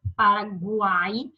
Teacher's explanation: U, a minha semivogal, o A, a minha vogal, e o I, a minha semivogal. Isso é um tritongo.